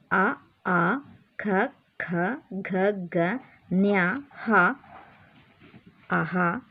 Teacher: ಕೆಳಗಿನಂತಿವೆ ಅಕ್ಷರಗಳು ಎಲ್ಲಿ ಹುಟ್ಟುತ್ತವೆ ಕಂಠ್ಯ ಅಕ್ಷರಗಳು ಕಂಠ್ಯ ಕಂಠ್ಯ ಅಂದ್ರೆ ಕೊರಳಿನಲ್ಲಿ ಈ ಇವಿಷ್ಟು ಅಕ್ಷರಗಳು ಕೊರಳಿನಲ್ಲಿ ಹುಟ್ಟುವುದರಿಂದ ಇವುಗಳನ್ನು ಕಂಠ್ಯ ವರ್ಣಗಳು ಎನ್ನುತ್ತೇವೆ